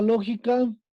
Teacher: Esa es la sílaba tónica, lo.